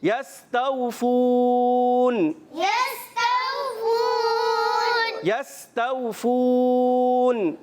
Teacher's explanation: یہاں پر بھی سین سیٹی کے ساتھ ادا ہوگا. واؤلین نرمی سے ادا کریں گے, کھینچیں گے نہیں. · واو مدہ آخر میں مد عارض ہو جاتا ہے, اس کو تھوڑا سا ہم لمبا کر کے ادا کریں گے